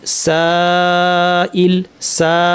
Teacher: এখানে পরে হামজা থাকায় টানটা লম্বা হলো